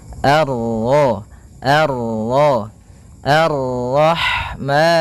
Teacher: Kemudian ini bertemu dengan huruf ro yang berharakat tasydid. Maka rnya kita baca dengan tafkhim.